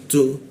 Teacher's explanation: Tu itu posisinya ujung lidah ditempelkan ke giginya, ada hembusan udara.